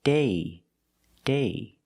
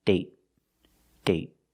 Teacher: with date, we see the vowel is shorter because you have a stop T at the end